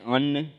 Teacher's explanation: अनुस्वार, तो अनुस्वार जैसे अन्न बोलिएगा तो इसका जो उच्चारण स्थान हो जाएगा अनुस्वार का, यह नासिका होगा।